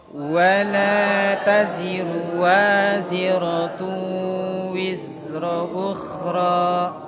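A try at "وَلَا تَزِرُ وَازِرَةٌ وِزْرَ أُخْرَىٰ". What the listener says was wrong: Ya, jadi ru-nya itu ndak panjang ya, bukan wala taziru, ndak panjang itu. Wala taziruwa gitu. Wala taziruwa. Wala taziru waziratun wizra ukhra.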